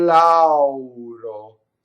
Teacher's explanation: Notice that the R is flipped and that the final O is closed because it's not on the stress.